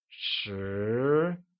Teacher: Ten becomes Shí , and is pronounced with a mid rising tone